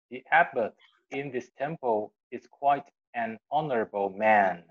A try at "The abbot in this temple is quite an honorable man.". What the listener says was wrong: Very ▁good, ▁very ▁good.